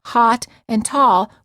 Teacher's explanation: many Americans pronounce hot and tall with the same vowel sound